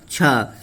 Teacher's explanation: छ जो है महाप्राण अघोष वर्ण है